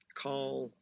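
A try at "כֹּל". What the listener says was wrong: It's kol. Kol, not kal, but kol. This is an O.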